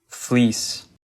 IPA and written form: flɪis (fleece)